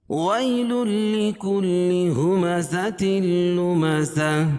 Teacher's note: وی یا ساکن سے پہلے زبر ہو تو یا لین ہوتا ہے، اس کو نرم آواز کے ساتھ جلدی پڑھیں گے